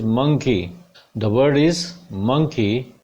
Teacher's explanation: So M पे stress primary stress है